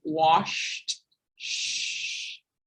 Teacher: Unvoiced, it's just air coming through your lips, the sh.